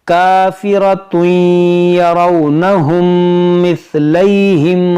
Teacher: मीम साकिन के बाद दूसरी मीम है, तो यहाँ पर इदगाम शफवी का कायदा लगाएंगे, यानी गुन्ना करेंगे